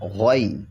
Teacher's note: یہ موٹا ہوگا غین کیونکہ حروف مستعاریہ میں سے ہے